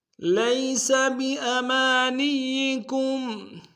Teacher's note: لیس میں یا لین ہے بغیر کھینچے پڑیں گے